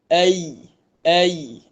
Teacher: kita baca dengan kita angkat tengah lidah kita ke langit-langit. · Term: huruf ya